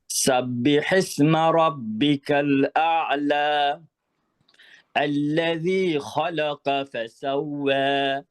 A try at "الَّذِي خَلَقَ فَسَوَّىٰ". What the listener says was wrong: এখানে খেয়াল করেন, আল্লাযী খালাকা, এই যে কাফের মতো হয়ে যায়, কফটা পুরোপুরি মোটা হয় না। খালাকা।